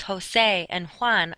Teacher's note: the letter J in Spanish is how they make our H sound the names Jose and Juan are spelled with J's because that's